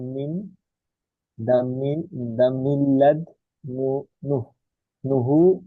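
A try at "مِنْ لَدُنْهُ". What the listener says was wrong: না, উনহু না, মিল্লাদুনহু। নুন জজম তো এটা।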